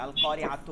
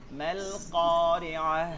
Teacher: শেষে তা আছে, কি হইতেছে, হা হয়ে যাচ্ছে